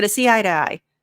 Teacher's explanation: we use the flap T, we reduce the to, we kind of say it a little bit not slurred, but it just isn't super clear.